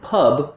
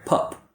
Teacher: instead of producing a voiced B, they produce an unvoiced sound which sounds like a P